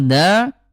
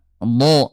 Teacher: huruf dal ayah bunda ini ujung lidah disentuhkan dengan pangkal gigi seri atas, sementara kalau do ayah bunda ini hafal tulisan sisi lidah ya, da do.